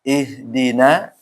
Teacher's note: Ihdino. Maksudnya no itu seharusnya dibaca na fathah atau itmamul harakat, penyempurnaan harakat